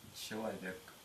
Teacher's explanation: языка к передняя и к задняя например слово человек так как в слове имеется передние гласные и то соответственно взрывная согласная к должна быть передняя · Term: передняя взрывная к